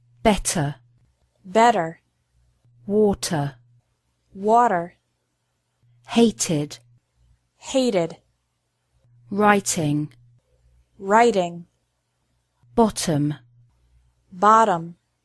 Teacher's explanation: Americans often pronounce the letter T like a quick D sound